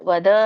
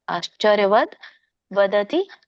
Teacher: ವದ್ ವದ ಅನ್ನಂಗಿಲ್ಲ ವದ್ ವ್ಯಂಜನ ಇದೆ